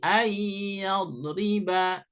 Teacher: Jadi an ayyadriba dibaca ay karena nun ketemu ya. Secara tajwid adalah idgham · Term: Idgham bigunnah